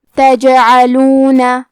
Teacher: کلمت تجعلون میں حرف الجیم پہ جزم ہے، جیم بھی حروف القلقلہ میں سے ہے، تو ہم یہ حرف کو ہلاتے ہوئے یہ کلمہ کو پڑھیں گے